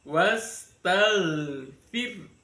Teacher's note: Wastaghfir, firnya dibaca tarkik. Jadi ro, kalau ada ro sukun, sebelum ro sukun ada kasroh, itu ro-nya dibaca tarkik tipis.